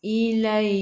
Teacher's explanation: Kaf sifat hurufnya hamas, kena ada angin sedikit sahaja.